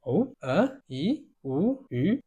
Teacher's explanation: the second tone is go up, so it's more like add a question mark on each one